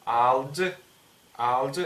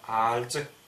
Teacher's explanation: Будет не алдж, алдж, а альдж. Слегка смягчается буква Л. Не как в русском, не до такой степени, как в русском альдж тоже, а чуть-чуть.